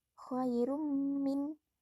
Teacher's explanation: Yang pertama, khairum min dibaca idgham biguna. Alasannya, dhomatain bertemu dengan mim, cara membacanya adalah dengung